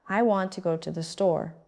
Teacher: Stressed, want, go, store. The words I, to, and the are said quickly and softly. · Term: sentence stress